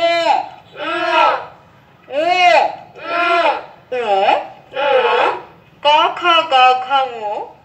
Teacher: এই বর্ণগুলো উচ্চারণের সময় আমরা দেখি যে কন্ঠে একটা মিলন ঘটেছে অর্থাৎ কন্ঠনালীর এখানে একটা মিলন ঘটে এটা যদি না হয় একসাথে যদি না মেলে তাহলে ক খ এই ধ্বনিগুলো উচ্চারণ করা যায় না। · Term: কন্ঠ বর্ণ